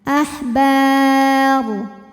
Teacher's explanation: ketika kita berhenti ro-nya dibunyikan secara tafkhim · Mad tabi'inya alif didahului baris fathah, kemudian huruf yang disukunkannya ro. Kalau berhenti ba-nya boleh dipanjangkan 2, 4 atau 6 harokat asal konsisten dalam sekali bacaan. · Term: mad arid li sukun